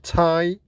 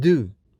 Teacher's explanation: So this is an oral sound, not a nasal sound. T is unvoiced or voiceless and fortis, that is produced without vibration in the vocal cords with more force. D is voiced and lineous, that is produced with vibration in the vocal cords with less force, like in tie and do.